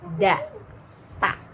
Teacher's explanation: Nah, jadi kalau orang yang terbiasa mengucapkan ta itu keluar, maka rasakan seperti pengucapan da, karena tempat keluarnya sama di ujung lidah dengan pangkal gigi seri atas